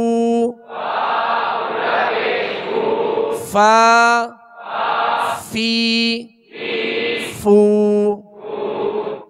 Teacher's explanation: اس کا صحیح جو مخرج ہے وہ ہے کہ اوپر کے سامنے والے دو دانتوں کے کنارے اور نچلے ہونٹ کا تر حصہ، یہ مخرج ہے، یہ نکلنے کی جگہ ہے فا کی۔